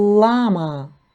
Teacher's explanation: перший звук - це звук л приголосний твердий